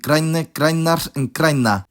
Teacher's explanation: that middle R basically assimilates to the N, geminating it